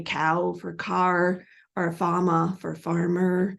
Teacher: When the is in postvocalic position after a vowel, often at the end of a word or in the middle of a word, they will distort that and turn it into an extended vowel-like sound, which is referred to as vocalization or vowelization. So they'll say cow for car or fama for farmer.